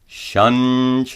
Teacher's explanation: Notice that the Anusvara is pronounced as a palatal nya.